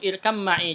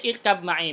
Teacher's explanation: kalau ada ba bertemu dengan mim kan langsung diidghamkan ke mim